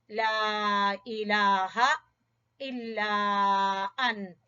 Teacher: مد جائز یا نظر آ رہی ہے، مد جائز، لا الہ، ہا کو اقصا حلق سے پڑھیں گے